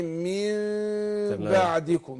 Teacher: الميم المقلابه دي بنطلع بانفتاح يسير بين الشفتين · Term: اقلاب